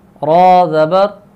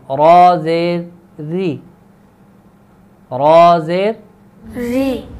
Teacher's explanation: را کے اوپر جب زبر ہو تو را کو پر کرتے ہیں، یعنی را کو موٹا پڑھتے ہیں۔